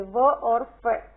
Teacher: दंतोष्ठ ऊपरी दांत व निचले होठ से व और फ